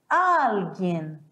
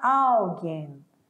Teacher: Não vai falar alguém, porque o L em espanhol, ele tem som de L mesmo. Ele não vai ter som de U.